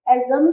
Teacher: Exame se escreve com X, mas não apresenta o som de X. Apresenta o som de Z. Exame tem o som de Z.